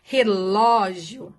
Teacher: o acento gráfico agudo que vai deixar essa vogal com o som aberto